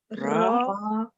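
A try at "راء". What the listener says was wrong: Yes, raw. Raw. So remember, from today, no more ra. Raw. Raw. Heavy.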